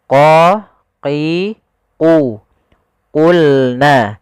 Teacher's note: Huruf qaf pangkal lidah kita harus kita angkat sehingga dia makhraj daripada huruf qaf itu pangkal lidah dengan langit-langit atas, maka dia menempel.